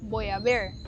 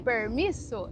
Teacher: R do interior, presente aqui, bem puxado, bem marcado. Então nós que somos do interior, a gente é do Paraná, de cidade pequena, a gente tem esse R bem marcado, sabe?